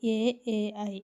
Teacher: కంఠముల నుండి తాలువుల నుండి పుట్టిన వర్ణములను కంఠతాలవ్యములు అందురు